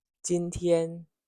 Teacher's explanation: first tone, high and steady